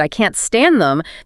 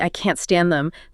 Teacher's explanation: The stress on stand and that slightly higher pitch and stress on can't signals her intensity. If you just said the words flatly I can't stand them.